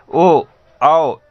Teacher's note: तब भी हमारे जीभ मुख के अंदर की तरफ जाता है, पीछे की तरफ जाता है। औ, ये सभी स्वर जब आप बोलेंगे तो जीभ पीछे की तरफ जाता है, इसीलिए इसे पश्च स्वर कहा जाता है।